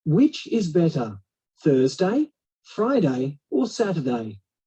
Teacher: intonation with choices, of course, that drops at the end of the last choice.